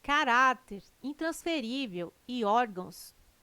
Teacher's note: Caráter, intransferível e órgãos têm sua sílaba tônica na penúltima sílaba. São paroxítonas.